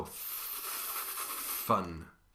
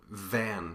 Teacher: the v your hand should feel your buzzing in your throat f and v are a pair of consonants that are identical except for that buzzing in your vocal chords